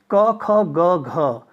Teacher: इन वर्णों के उच्चारण में जिह्वा कंठ को स्पर्श करती है